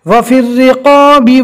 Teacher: رو کو باریک پڑھنا ہے، رو کے نیچے زیر اس لیے، اور قوف کو پور پڑھنا ہے